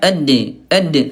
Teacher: Ya, sementara bunda kalau huruf dal, ayah bunda dia syiddah, dia kuat. Ya, suaranya tertahan dan dia qalqalah mantul